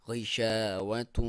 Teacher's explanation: تنوین ہے اور واؤ میں اس کا ادغام ہے اور غنہ کے ساتھ ہے، یہاں پہ ایک الف کے برابر آپ ناک میں سے آواز نکالیں گے